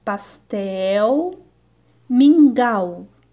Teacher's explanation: as palavras que terminam com a letra l ou u tem o mesmo som